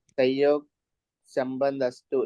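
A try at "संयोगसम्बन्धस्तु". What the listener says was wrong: नहीं, अस्तु नहीं है वो। संयोग संबंध तो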